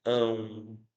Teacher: Ele é nasal porque uma parte do som sai pela cavidade nasal. E ele é decrescente. Por quê? Porque sai do som da vogal e vai para o som da semivogal, ou seja, o som desceu, né? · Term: ditongo